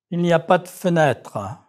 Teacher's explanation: a sentence where you have one dropped schwa and one that is pronounced